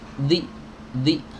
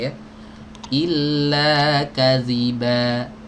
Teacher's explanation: Zal keluar dari ujung lidah bertemu dengan ujung gigi seri atas digesek sedikit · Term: huruf Zal